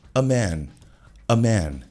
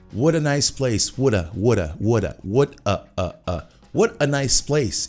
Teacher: no meio de uma frase, esse a, ele pode ser morto e pode ser um schwa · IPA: /ə/